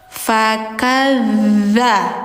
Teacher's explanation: bukan da tapi za. Lidah ujung ditempel gigi atas.